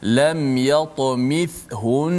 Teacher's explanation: bila wakaf di hujung tu nun sabdu, tetap kena dengung. Contoh lam yatamithun, kena dengung juga sebab nun tu sabdu.